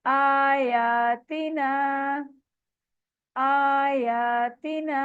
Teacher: तीनों को बराबर बराबर आपने स्ट्रेच करना है, किसी की मिकदार कम ज्यादा नहीं करनी। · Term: मद्दाज